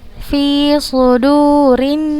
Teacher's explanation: itunya terdengar Fi sudurinnas Vi sudu-sudu suhu Hai ada suara yang ada suara tambahan yang keluar dari ujung lidah dengan dua gigi seri atas dan bawah